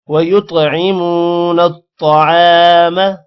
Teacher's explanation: نون کے بعد تو ہے، تو پر شد ہے، دونوں کو آپس میں ملائیں گے، تو کو موٹا کرنا ہے